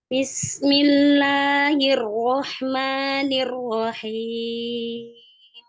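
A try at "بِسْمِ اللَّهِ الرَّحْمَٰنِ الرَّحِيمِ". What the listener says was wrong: Kalau ma-nya udah bagus. Kalau la-nya itu sepertinya lidahnya masih terangkat. Jadi lidah diam. Lidahnya diam.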